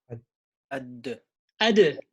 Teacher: So I release the dal, not ad as the jim. I release the dal with qalqala.